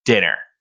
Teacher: dinner so as you can see that straight line indicates that with a statement we have just a flat line so dinner doesn't change